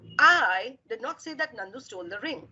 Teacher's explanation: with me i so the eye is being stretched out here there's a lot of focus there's a lot of stress there's a lot of emphasis on i